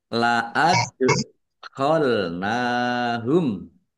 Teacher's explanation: dal sukun, bacaan kolkolah, dibaca memantul, ya, ditampakkan pantulannya.